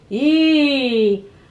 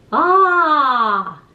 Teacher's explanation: The difference between e and ah, there's a big difference. E is a little more closed, a little more forward.